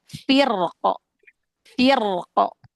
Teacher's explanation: Rnya sukun, maka itu harus dibaca tebal, enggak boleh tipis. Kenapa? Karena setelah ro sukun ada qf yang disukunkan.